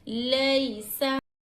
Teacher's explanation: या साकिन से पहले हरकत ज़बर हो तो यालीन होगा। यालीन को नर्म आवाज़ के साथ जल्द अदा करेंगे, ज़रा भी नहीं खींचेंगे